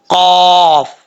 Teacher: زبان کی جڑ اوپر والے تالو کے نرم حصے سے لگے تو دو نقطوں ملا قاف پڑھا جاتا ہے